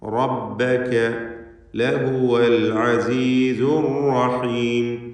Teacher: റബ്ബക റാഇന് പൂർണ്ണമായ തഫ്ഖീം കൊടുക്കണം